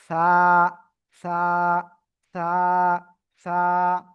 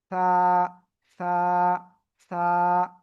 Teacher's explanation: জিহ্বার আগা এই উপরের দুই দাঁতের আগায় লাগাবেন। লাগিয়ে হালকা বাতাস বের করে উচ্চারণ করতে হবে।